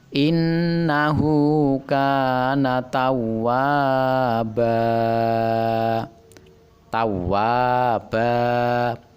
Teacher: dibaca panjang dua harakat atau dua ketukan karena mad iwad